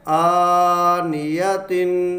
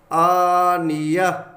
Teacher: تو اسے پڑھیں گے تا دو زیر تین، آنیاتن، اور جب ہم یہاں اسے وقف کریں گے تا کو ساکن کریں گے تو تا جو ہے یہ ہا بن جائے گا۔ اسے پڑھیں گے آنیہ۔